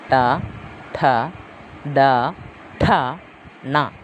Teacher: പല്ലില്ലേ അണ്ണാക്ക് ആ ഭാഗത്ത് ആ മുകളിലത്തെ പല്ലിന്റെ കുറച്ചുകൂടി മുകളിലോട്ട് കയറിയിട്ട് അണ്ണാക്കിന്റെ അണ്ണാക്കും ഈ പല്ലും കൂടെ ചേരുന്ന ഭാഗത്തിന് കുറച്ചു പുറകോട്ടായിട്ട് ആണ് ഈ നാക്കിന്റെ അറ്റം പോയി ടച്ച് ചെയ്യുന്നത് അതുകൊണ്ടാണ് ഇതിനെ മൂർധന്യ മൂർധാവിലാണ് ശരിക്കും ടച്ച് ചെയ്യുന്നത് അതുകൊണ്ടാണ് ഇതിനെ മൂർധന്യം എന്നുകൂടി